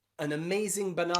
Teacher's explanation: whenever that A is not stressed, especially at the beginning of words like about, around, amazing, okay, it is a schwa sound